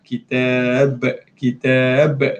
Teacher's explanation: Bila kita berhenti, qalqalahkan huruf ba. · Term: qalqalah kubra